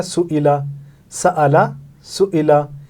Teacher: आवाज़ तब्दील हो जाएगी, जैसे सआला से सुइला हो जाएगा, आ के बजाय ई हो जाएगा।